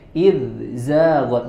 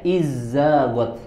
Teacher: huruf dzal kemudian setelahnya ada huruf zai. Idzaghat. Jangan sampai kita bacanya izzaghat langsung diidghamkan. Padahal itu harusnya dibaca jelas